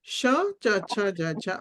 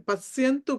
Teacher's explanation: ఎక్కడైతే చ వర్గం పలుకుతామో చ ఛ జ ఝ అలాగే ష పలకాలి ఓకే ష చ ఛ జ ఛ అలా పలకాలి పశ్యంతు అని పలకాలి